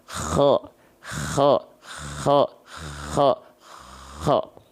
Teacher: Huruf kho itu dilafalkan dari bagian al-halqi. Al-halqi itu tenggorokan.